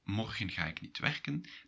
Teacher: That's an affirmation, a statement, it's not a question, so you go down a little at the end.